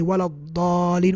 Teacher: Dad is kind of like close as well, because dad comes from the whole side of the tongue. Lam from the tip of the tongue, dad from the side of the tongue, so it's very close as well